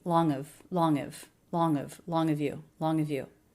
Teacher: So we just have an extra syllable of linking onto the NG. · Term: dropping the H reduction